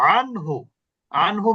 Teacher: তাহলে এখানেও দন্তন্য স্পষ্ট, তার মানে গুণনা হচ্ছে না। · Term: ইজহার